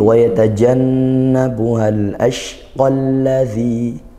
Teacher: Nah, karena hamzah wasal ya. Kalau wasal dia gak terbaca Hamzah wasal ini.